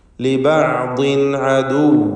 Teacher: ലിബഅ്ദിൻ എന്നതിലെ തൻവീനിനെ ഇൽഹാർ ഹൽക്കി നൽകി മണിക്കാതെ വെളിവാക്കണം